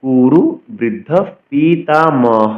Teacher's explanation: কুরু বৃদ্ধ পিতামহ বিসর্গের জন্য হ উচ্চারণ হল কুরু বৃদ্ধ পিতামহ দেখুন বিসর্গের জন্য হ উচ্চারণ করেছি